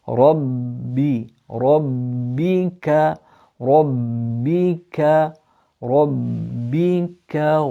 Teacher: the ba has a shadda on it. Rabbi. So you build up pressure in your lips. Rabbi. Rabbika.